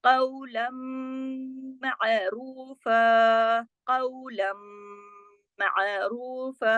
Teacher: लाम दो जबर लन की तनवीन थी, लेकिन आगे मीम मुशद्दद आया, इदगाम हुआ, इदगाम ताम बिल गुन्ना हुआ